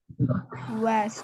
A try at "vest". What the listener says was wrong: West, vest. And for the V, put your teeth on your lower lip. Vest. If you feel a buzz, like a buzzing sound, then you're making the sound.